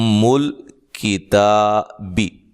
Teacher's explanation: یہاں میم پہ غنہ ہو رہا ہے اور تا کو لمبا کیا جا رہا ہے، باقیہ کسی بھی حرف کو لمبا نہیں کرنا اور نہ ہی موٹا کرنا ہے۔